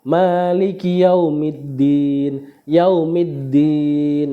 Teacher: Din itu kan tulisannya Dini tapi kalau diwakafkan jadi panjang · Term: Mad Arit sukun